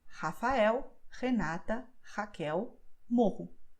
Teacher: the sound is coming from my throat, but the tongue isn't doing anything